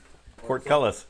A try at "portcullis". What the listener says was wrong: It's not two different words. You're enunciating it like it's two different words, and it's not two different words. Portcullis.